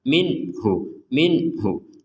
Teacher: itu apa artinya jangan samp ada dengung jangan sampai ada samar jadi enggak ada dengung dan samar sama sekali